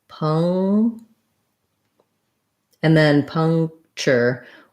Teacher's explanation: this is not an N, but it's an NG sound.